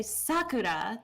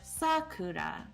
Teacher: but in japanese it's actually like sakura higher lower lower